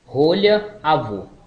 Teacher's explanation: semi-fechado posterior oral arredondado